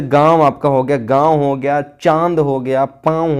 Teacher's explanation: जिन स्वरों का उच्चारण करते समय जो हवा है वो मुख और नाक से निकलती है, वहाँ पर क्या होता है? अनुनासिक होता है।